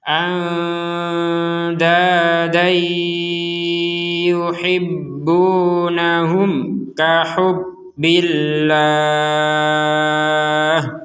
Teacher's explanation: Sekali lagi, kalau kita gabungkan kata dan ini, anda dan dengan yuhibbunahum, maka tanwinnya ini ya yang barusan kita baca, kalau berhenti dibaca dua harokat, sekarang tanwinnya ya dimasukkan kepada huruf ya dan tidak ada panjang sama sekali sudah.